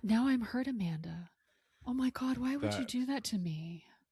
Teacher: She puts on this like breathy baby voice.